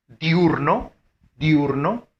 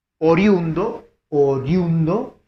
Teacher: Y la última palabra, 21, 21, fuerza de voz también en la U. Entonces la fuerza de voz siempre recae en la segunda vocal.